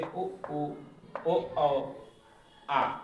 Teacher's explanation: और बाकी का जो स्वर बचा हुआ है, बाकी के जो 11 स्वर होते हैं, इन 11 में जो बचे हुए हैं उसको हम पश्च स्वर में कहते हैं, जो पीछे के हिस्से से उच्चारित करते हैं